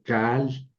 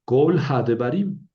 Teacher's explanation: Ya están las dos condiciones. Ese kamet se convierte en kametz hatuf. Es una O breve.